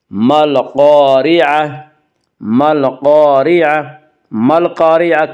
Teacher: قاف یا حروف قمری میں سے ہے، قاف سے پہلے الف اور لام ہیں، اس سے صرف لام کو پڑھا جائے گا، الف کو نہ پڑھیں گے۔ ما القاریعہ قاف کو پر پڑھیں گے، قاف حروف مستعلیہ میں سے ہے، حروف مستعلیہ 7 ہیں جن کا مجموعہ خص ضغط قز، یعنی خا صاد ضاد غین طا قاف ظا، یہ حروف ہمیشہ ہر حال میں پر پڑھے جاتے ہیں۔